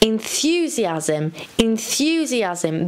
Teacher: the stress is on the th sound